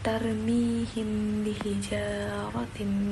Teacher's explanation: terdapat ikhfa syafawi karena mim sukun bertemu ba dibaca dengung